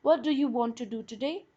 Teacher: the first do is weak and the second is stressed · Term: weak forms